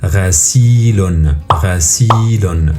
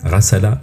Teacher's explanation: le sa il est prolongé avec une ya voyelle longue, du coup c'est une syllabe longue